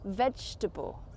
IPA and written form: ˈvɛd͡ʒtəbəl (vegetable)